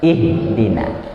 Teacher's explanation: Huruf H-nya dia harus narik dari dalam ya. Ihdina. Jadi ketika dirasakan di sini dia agak ada rasa getar sedikit.